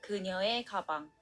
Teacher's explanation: Like, say a word is 3 syllables long and this 의 is the second syllable. and when it's used as a possession particle, it's pronounced as 에